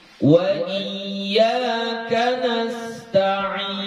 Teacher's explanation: Yang tawassut itu arba'u harakatin, 4 harakat.